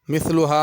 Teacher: مثلها میں ثا ہے، اس کو مثلها سین نہیں پڑھنا